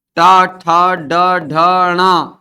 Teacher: ट, ठ, ड, ढ, ण सब के सब मूर्धा से उच्चारित होते हैं।